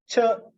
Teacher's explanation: a voiceless palato-alveolar affricate